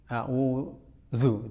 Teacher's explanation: Ya walaupun dhammah ya tetap saja tipis.